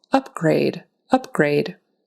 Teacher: the syllable stress is going to be on the first syllable